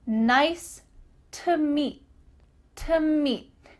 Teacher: the word to is being reduced to simply t', just the sound t'.